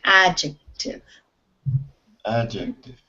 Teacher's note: the stress is on the beginning of this word, adjective. Adjective.